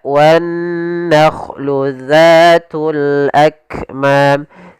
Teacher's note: ujung lidah kita menempel dengan gigi seri atas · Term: huruf zal